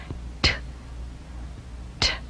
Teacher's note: 让该气息突然由口腔放出，产生一种爆发音，声带不需要震动